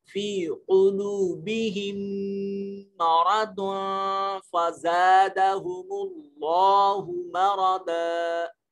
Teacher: یہ نون ساکن یہ دواد کے اوپر دو پیشیں آ رہی ہیں، نون تنوین ہے اور اس کے بعد فا حروف اخفا میں سے ہے. آواز کو ناک میں لے جائیں گے، اخفا کریں گے، اور میم کلمہ جلالت سے پہلے میم کے اوپر پیش ہے، اس کو موٹا کر کے پڑھیں گے.